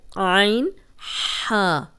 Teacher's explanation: درمیان والا حلق کا جو درمیان والا حصہ ہے یہ اس سے نکلتے ہیں عین ہا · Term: حروف حلقی